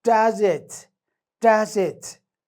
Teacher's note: In this context, waxa ku jira oo aanu ka dareemaynaa falling intonation.